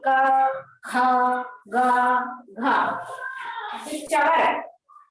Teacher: जो कवर्ग है क, ख, ग, घ, ये कवर्ग का उच्चारण स्थान कंठ है। कंठ का अर्थ गले से, कंठ से इनका उच्चारण किया जाता है।